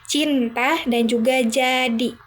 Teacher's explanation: Konsonan afrikat, ceh dan ceh. Kombinasi dari konsonan letupan dan juga gesek.